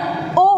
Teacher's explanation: उन दोनों से बना हुआ वर्ण ओ हो गया, तो ओ का उच्चारण स्थान कंठोष्ठ हो गया